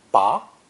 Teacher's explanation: Ba, pronounced with a rising tone, ba, means to pull out or extract.